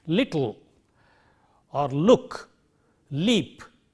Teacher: It stands for the sound L, which we have in a word like little or look, leap, etc. So this is a lateral sound which is a voiced sound.